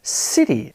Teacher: The first syllable is stressed. It has more emphasis than the second syllable. City. Take the word sustain. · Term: syllable stress